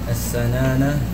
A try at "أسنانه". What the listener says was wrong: لا ليس السنانة. أسنانه. السكون واضح. Clear سكون on the page. Clear. سكون. ساكن. ساكنة. Silent. Is what? واضح. Clearly silent. أسنانه.